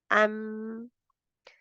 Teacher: कुछ रुकी भी तो है ना, क्योंकि अभी मखरज में लगा हुआ है तो रुकी हुई है। अन, अम, तो जैसे मीम का होंठ बंद होंठ हो जाते हैं, तो तब नाक की तरफ डाइवर्ट हो जाती है आवाज़।